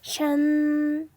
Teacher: A는 아 소리가 나고 N은 받침 니은으로 가볼게요. 샨 일성이네요. 높은 음이 쭉 연달아서 소리가 나요.